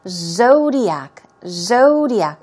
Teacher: as you see the first syllable is stressed